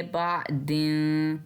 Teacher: नून की आवाज़ को वाज़े नहीं करना। हम इसको पढ़ेंगे बादिन, बादिन नहीं, बादिन क़ालू।